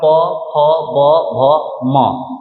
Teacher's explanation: तो इस सब का देखिएगा कि ओष्ठ का स्पर्श हो रहा है, ऊपरी ओठ और निचली ओठ दोनों का स्पर्श हो रहा है